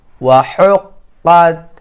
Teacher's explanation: এই কফ হরফটি হচ্ছে কলকলার শব্দ, এই জন্য শাক্কাত একটা ধাক্কা লাগছে